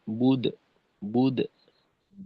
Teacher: কলকলা কিন্তু ঠোঁট খোলা রেখেই হবে, বুদো যেন হয়ে না যায়। বুদ, বুদ, এরকম একেবারে খুলে তারপর মধ্যম মধ্যম মানে আদায় করতে হবে।